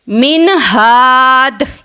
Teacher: یعنی نون ساکن کے بعد حروف ہا آ رہا ہے، تو اس کو ہم ظاہر کر کے پڑھیں گے۔